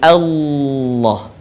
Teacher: suaranya menebal dengan cara menutupkan bagian lidah kita ke langit-langit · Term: lafaz Allah